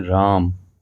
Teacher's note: राम को जब हम पुकारने के रूप में प्रयोग करते हैं उसमें भी तीन मात्रा काल का समय लगता है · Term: प्लुत स्वर